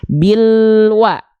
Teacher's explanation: bunyi konsonan l tidak ada bunyi hidup lagi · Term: lamkun